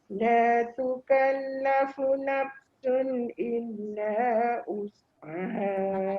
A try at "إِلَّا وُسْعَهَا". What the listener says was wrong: Jangan tolak daripada hamzah. Tolak daripada bibir terus. Illa wus. Kalau us dia jadi hamzah.